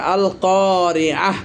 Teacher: দেখছেন আলিফ লাম কফের সাথে এসেছে, লাম উচ্চারণও হচ্ছে। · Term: লামে কমারিয়া